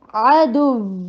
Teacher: اور یاد رکھیے کہ جو بھی حرف, کوئی بھی حرف اگر تشدید کے ساتھ ہے اور وہ سٹاپ لے, جیسے یہ آپ نے عارضی اس کو سٹاپ دیا ہے نا, تو جب بھی وہ سٹاپ لے گا تشدید والا حرف, اس میں نبر ہوگی, آواز اوپر جا کے نیچے آئے گی